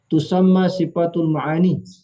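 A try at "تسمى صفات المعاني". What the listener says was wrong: Nah ini harus sifati ini. Nggak boleh sifatu. Tahu nggak kenapa Ustaz? Maf'ul ini. Naib fa'ilnya mustatir. Ini ada lillah ini, bukan alif lam.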